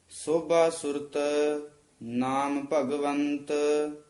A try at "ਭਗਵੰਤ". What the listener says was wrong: ਆ ਭਗਵੰਤ ਤੱਦਾ ਨਹੀਂ ਬੋਲਣਾ, ਭਗਵੰਤ ਤੱਤਾ ਉਚਾਰਨ ਕਰਨਾ।